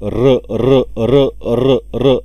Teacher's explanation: कारण तुम्ही र र र र र असा उच्चार काढला तर तुम्हाला लगेच जाणवेल की जिभेची कंपन सुरू झालेली आहेत म्हणून कंपित व्यंजन वर्ण